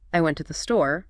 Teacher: in a sentence like I went to the store the words went and store would be stressed